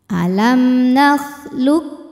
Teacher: mim sukun bertemu mim berharakat maka mim pertama dileburkan ke mim kedua disertai Bui dengung jadi bunyinya m dan kita tahan [Musik] alamlum